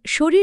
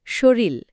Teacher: যেমন শরীর শব্দটি আমরা কথায় অনেক সময় বলি শরীল, একটা র বদলে ল হয়ে গেল। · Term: বিষমীভবন